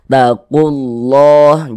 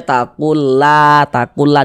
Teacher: Ada lafaz Allah, sebelum lafaz Allah ada harokat dhammah, maka lafaz Allahnya dibaca tafkhim, dibaca tebal. Huruf lam yang di tengahnya nih, huruf lam jalalahnya ini dibaca tebal. Taqullah, jangan dibaca takullah dibaca tipis gitu, jangan, tapi dibaca tebal.